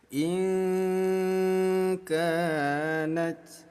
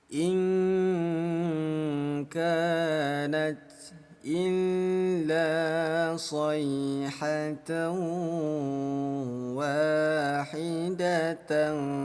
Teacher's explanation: nun sukun bertemu kaf namanya ikhfa, disamarkan. Bunyi nun dirubah menjadi bunyi ang.